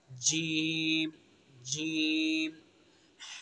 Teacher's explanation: जबान का बीच और उसके मुकाबिल ऊपर का तालु, इससे जीम अदा होगा